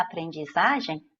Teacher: Mas o EM aqui na aprendizagem forma um ditongo decrescente, porque o E é a vogal, o M soa como um fraco I no final da palavra, que é o som de I é semivogal, então você tem um ditongo decrescente nasal.